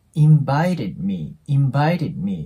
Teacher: d の音に関しては破裂音なので次に母音が来ないときは音が消えるんですね